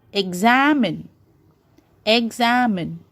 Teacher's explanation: am is stressed so this is called as the word stress you're stressing the middle of the letters that is am whereas